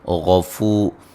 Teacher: غین کو موٹا ادا کریں گے